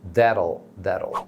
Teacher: Então o T final do that fica com aquele som de R, igual do português.